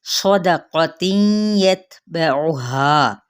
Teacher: सौद पुर है, क़ाफ भी पुर है और यहाँ पे इदगाम माल गुन्ना का कायदा।